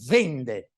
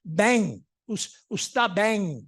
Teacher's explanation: prima della n velare la e è sempre aperta